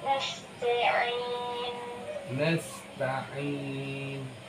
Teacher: Itra juga punya sifat hams. Ya. Makanya bunyinya sedikit tambahkan hamsnya sedikit.